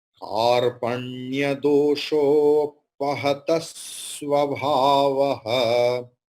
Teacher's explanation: So it is conjunct consonant. So here before conjunct consonant there is short vowel ta, a. So conjunct consonant's first letter will be doubled.